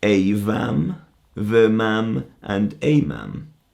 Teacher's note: It only has a soft mutation. The M changes to a V sound.